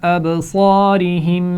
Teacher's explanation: ابصارہم با پر قلقلہ تھا